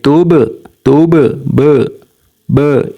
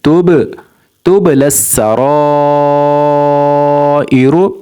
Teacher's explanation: لیکن یہاں پر چونکہ با حروف قلقلہ میں سے ہے اس لیے جب بھی با ساکن ہوگا تو یہ حروف قلقلہ میں سے ہوگا، تو اس کی آواز ہلتی رہے گی، تھوڑی دیر بعد بھی آواز آئے گی، جیسے توب توب ب یہ بعد میں آواز آتی ہے توب توب للسرائر.